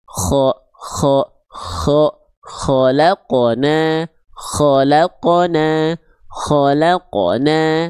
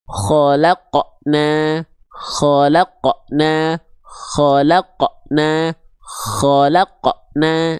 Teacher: Khalaqna, khalaqna khalaqna khalaqna. Nah, jadi si pantulannya itu tertahan. Si qof-nya itu kayak ada portalnya, kayak ada remnya.